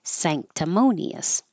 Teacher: So the N will sound like a NG combination when it's before a K or a G.